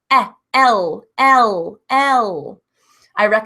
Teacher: when you say the sound isolated there's an e in the beginning